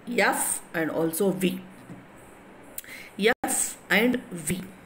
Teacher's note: when you pronounce the F or V, so your lower lip in contact with the upper teeth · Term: labiodental fricatives